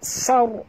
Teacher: ra itu mati, huruf sebelumnya baris atas, kena baca tebal